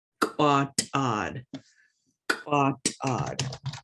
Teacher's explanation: I got another one of those glottalized K's with the raised W. We also got this T, glottalized T, which is a harder t sound.